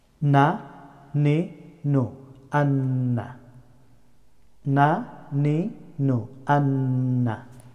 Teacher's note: The letter of noon pronounced from edge of the tongue touching upper hard palate, slight front side from the lamb.